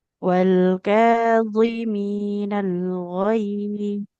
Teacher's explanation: Ketika sukun tetap tebal ya huruf dha itu.